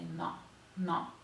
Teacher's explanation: It's just dental. No. So you press your tongue against your teeth and say no, no.